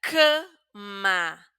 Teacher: la pronunciamos de una manera un poco más cerrada, nasal